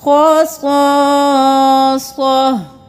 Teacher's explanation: صرف ہا کی آواز آئے گی، خصاصہ